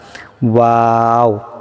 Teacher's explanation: আর ওয়াওটা কিন্তু ভিন্ন, ওয়াওটা সম্পূর্ণ ভিন্ন হবে, এটা ঠোঁট লাগবে না, আর 2 ঠোঁটের মাঝখানে ফাঁকা থাকবে, ঠোঁটটা জাস্ট গোল হবে। ওয়াও উচ্চারণের সময় 2 ঠোঁট গোল হবে কিন্তু ঠোঁট লাগবে না।